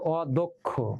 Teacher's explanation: যেমন অদক্ষ, এই যে দেখো এখানে লেখা আছে অদক্ষ, এই যে এখানে দ এর সাথে কি আছে অ, কিন্তু অ এর পরে কি আছে কয় স, তাহলে অ এর পরে কয় স থাকার কারণে অটা এখন ও হয়ে যাবে, এই জন্য হবে অদক্ষ। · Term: সংবৃত